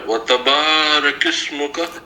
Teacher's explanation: وتبارك اسمك نہیں، وتبارک اسمک، کاف کی زبر کو ڈائریکٹ سین سے ملائیں گے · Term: حمزۃ الوصل